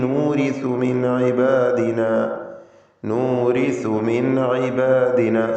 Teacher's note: സക്കിനത്ത നൂൻ ശേഷം ഐന് ഇൽഹാർ ഹൽഖി മണിക്കാതെ വെളിവാക്കുക.